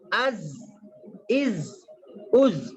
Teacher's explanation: زبان کی نوک اور سامنے کے جو اوپر نیچے والے 4 دانتوں کے کنارے ہیں وہاں سے یہ ادا ہوتا ہے